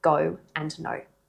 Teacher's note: The O sound is a diphthong, which is just a really fancy word that means it's made up of two vowel sounds that glide together and your mouth moves as you say it.